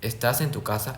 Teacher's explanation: Como pueden ver, se mantiene y sube. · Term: entonación ascendente